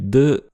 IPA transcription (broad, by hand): d